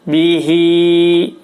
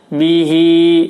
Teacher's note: Dibaca panjang juga hi-nya karena kasrohnya kasroh tegak. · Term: kasrah tegak